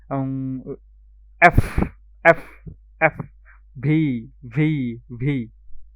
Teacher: উপরের দাঁত নিচের ঠোঁটের সাথে মিশে